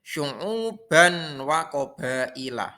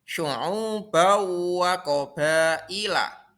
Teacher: Jadi tanwin dimasukkan ke dalam huruf sesudahnya. Itu gombi gunnah.